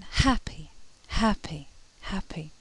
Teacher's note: this sound is produced somewhere deep in the throat and there's some kind of friction that deep in the throat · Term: breathy voiced consonant